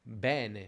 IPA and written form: ˈbɛ:ne (bene)